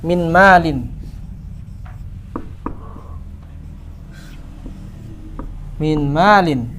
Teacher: nunnya hilang secara zat dan sifatnya, masuk langsung huruf mim.